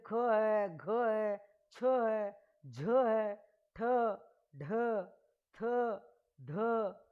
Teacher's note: जिन व्यंजनों के उच्चारण में वायु की मात्रा अधिक लगती है, वो महाप्राण होते हैं। अब पहला, तीसरा, पांचवा गया, कुल 5 थे, तो दूसरा और चौथा व्यंजन बचा, वो महाप्राण बचा।